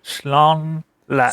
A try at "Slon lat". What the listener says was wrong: S and lawn. Okay, you know lawn like a lawn mower? Yeah, it's like lawn, but with an S. Yay, not schlong, but I know you love your schlong lats.